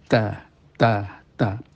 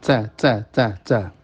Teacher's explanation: Ta itu ada hamesnya yakni angin mengalir Tapi kalau dalam keadaan berharakat tidak seberapa bisa dialirkan ya karena terhalang dia itu memiliki sifat ee syidah suara menahan